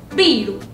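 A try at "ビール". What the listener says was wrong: But with the, think about it without the u at the end.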